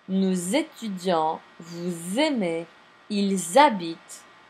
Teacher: The S on the pronoun is pronounced as a Z. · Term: liaison